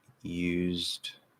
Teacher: The T in used to isn't aspirated